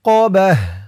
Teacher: হা উচ্চারণ করলাম কেন কারণ হচ্ছে এই ত চিহ্নতে অক্ফ করেছি অক্ফ করার সময় গুল তা থাকলে সেই গুল তাটা হা হয়ে যায়